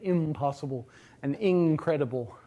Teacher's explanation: The consonant at the end of that prefix is always nasal. It just assimilates in place to the following consonants. So you get impossible and incredible, where you get a velar nasal version of in.